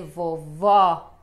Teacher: Então este O fica aberto, fica O. Talvez vocês não consigam perceber muito o som, mas existe diferença sim neste som para nós brasileiros, né?